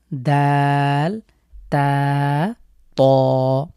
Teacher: জীভের যে সামনের অংশ এটি সামনের দুতে সামনের দুই দাঁতের গোড়ার সাথে লাগিয়ে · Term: দাল তা